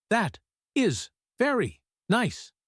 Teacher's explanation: If you say that is very nice with a falling flat tone, it sounds sarcastic.